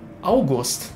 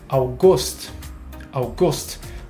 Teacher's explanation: du musst das wort hier auf der zweiten silbe betonen